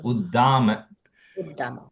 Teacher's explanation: just double, regular da only, not Mahaprana, da.